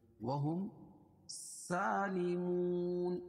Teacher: میم ساکن کے بعد میم اور با کے علاوہ کوئی اور حرف آئے اظہار شفوی ہوتا ہے، اس کو ظاہر کر کے پڑھیں گے. سالمون واو ساکن سے پہلے پیش ہو تو واو مدہ اور وقف کی حالت میں یہ مد حارث وقفی ہوگا.